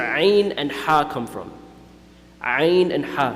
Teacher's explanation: the makhraj of ayn and ha is the center of the throat.